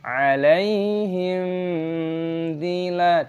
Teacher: A mim sukun diikuti oleh d, aturannya adalah izhar syafawi, baca dengan jelas, jangan dinasalkan, alaihim. dzila, kita tidak boleh mengaburkannya, harus jelas, alaihim dzila, panjangkan lam, ada tanda vokal seperti ini.